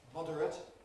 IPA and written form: ˈmɒdərət (moderate)